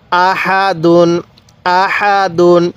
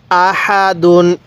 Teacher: এই হা টা উচ্চারণের সময় মুখ দিয়ে হালকা বাতাস বের করব